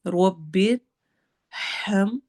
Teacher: ہا کی آواز نکالنی ہے گلے کے درمیانے حصے سے، تھروٹ لیٹرز میں یہ مڈل میں آتا ہے